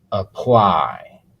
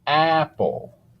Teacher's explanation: For apply, the A sounds like Oh. For apple, the A sounds like ah.